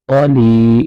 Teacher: یا مدہ کی وجہ سے لام کو کھینچ کے پڑھیں گے ، قاف کو پر کر کے پڑھیں گے۔ اب یہاں لام